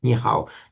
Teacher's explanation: The third tone changes to a second tone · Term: tone sandhi